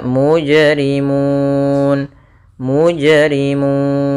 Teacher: Mun boleh kita panjangkan dua harakat boleh empat harakat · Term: Mad Arid